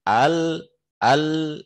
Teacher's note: lidah itu udah nempel di langit-langit dan nggak ada suara di situ, tapi suaranya malah ke pinggir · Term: inhiraf